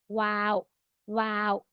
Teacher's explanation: वा only lips use होता नो तीथ नो टंग नथिंग ओनली लिप्स